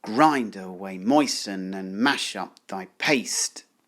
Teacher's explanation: this combination of stressed, unstressed, unstressed, stressed, unstressed, unstressed really focuses the attention on what the chemist is doing. The verbs, in other words. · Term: dactylic metre